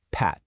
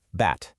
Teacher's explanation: It's a tiny puff of air, or lack of it, when you make that first sound. That one tiny phonetic detail, the P versus the B, is enough to create two entirely different words.